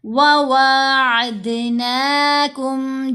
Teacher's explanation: پیش واو ساکن دو، دوسری دفعہ واو زیر وی، عدوکم وواعدناکم، پہلی واو چھوٹی ہے، دوسری واو کے اوپر کھڑا زبر ہے، لمبا کریں گے